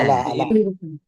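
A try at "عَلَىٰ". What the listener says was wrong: এখানে আলী, আলী কিংবা ও, তখন তুমি পড়ছিলা আলা ই, ইয়াটা উচ্চারণ হবে না। ইয়াটা উচ্চারণ হবে না। ওটার উপরে দেখো, ওটার উপরে উপরে নিচে কোনো কিন্তু হরকত নাই, আর হরকত না থাকলে তো উচ্চারণ হবে না। শুধু হরকত নাই, টানতে হবে কখন?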